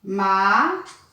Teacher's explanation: Pode observar que ela termina com M. Então, o som desse O tem que ser nasal